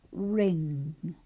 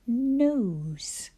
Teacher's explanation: Your tongue is much further back in your mouth than it is when we say a word like nose.